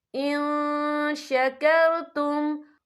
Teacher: ما یفعل اللہ بعذابکم ان شکرتم، ان یہاں نون ساکن ہے، نون ساکن کے بعد جو ہے شین آ رہا ہے، اور شین جو ہے اکفا کا ورڈ ہے تو ہم یا اکفا کریں گے، نون ساکن کی آواز کو ناک میں چھپائیں گے